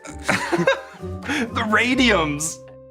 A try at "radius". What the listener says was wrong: Radius. Did you just say radiums?